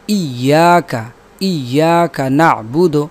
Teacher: یا کے اوپر شد ہے لہٰذا اس کو ہم دباؤ کے ساتھ پڑھیں گے